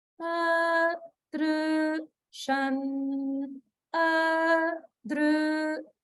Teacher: the a is upper swara, the dru is middle swara, and the shan is lower swara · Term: swaras